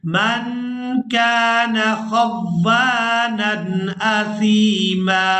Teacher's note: وقف کی صورت میں میم پر ہم نے ایک زبر ادا کرنی ہے اور اس میم کو ایک الف مقدار کھینچ کر ادا کریں گے۔